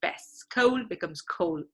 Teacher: often African American vernacular English people say kept, right, without the t.